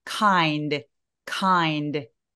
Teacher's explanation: 조금 더 소리를 kind, 자음을 터져 나오게 하시면 더 좋아요